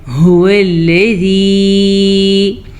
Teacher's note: واو کے اوپر بھی زبر ہے اور لام کے اوپر بھی زبر ہے، تو ہم دونوں کی مقدار کو کم سے کم لمبا کریں گے، کیونکہ زبر کی مقدار بہت کم ہوتی ہے۔